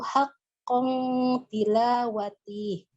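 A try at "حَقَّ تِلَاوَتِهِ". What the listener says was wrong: Tihnya jangan panjang Bu ya. Haqqo tilawati.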